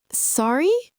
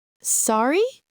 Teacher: Falling tone means, I apologize. Sorry? Rising tone means, I didn't catch that.